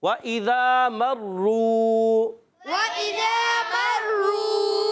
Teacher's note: مرو را پر پیش ہے اور تشدید ہے، ذرا رک کر ادا کریں گے. واو ساکن سے پہلے پیش آ رہی ہے، را پر واو مدہ بن گیا ہے، مگر را پر پیش آنے کی وجہ سے را پر رہے گا اور را واو مدہ بھی ہو جائے گا.